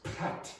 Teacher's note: When you have a P, a T, and a C at the start, you must aspirate it.